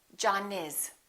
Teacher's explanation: we would connect the final consonant to the next vowel so this n and this a would be said together listen